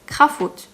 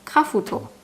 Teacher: We add a U sound in between the F and the T, resulting in Krafut. But remember, we can't have singular consonants in the coda of a syllable.